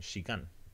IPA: ʃigan